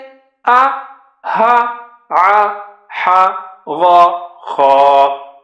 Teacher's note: چار ہیں ہونٹوں سے ما با وا فا، زبان کی نوک سے ہیں 12، تا ذا ظا تا دا طا، زا سا صا لا نا را، زبان کے بیچ سے ہیں جا شا یا، اور کناروں سے ہیں دو کا قا، 6 ہیں حلق سے آ ہا ع ح غا خا